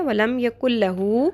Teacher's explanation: نون بالکل نون کی آواز بالکل سائلنٹ ہو جائے گی, ہم نے نون کی آواز نہیں نکالنی ہے بیچ میں. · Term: نون سائلنٹ